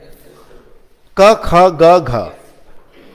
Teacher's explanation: So tongue touching the soft palate